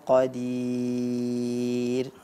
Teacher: catatan ya saat membaca syaiin Qadir nah Qadir huruf ro-nya itu saat kita berhenti pada kata Qadir maka ro-nya dibaca dengan tarqiq tipis